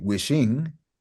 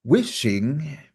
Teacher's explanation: how do we pronounce wishing stress on the first syllable